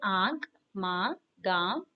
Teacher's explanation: अनुनासिक स्वरों के उच्चारण में मुंह से अधिक तथा नाक से बहुत कम सांस निकलती है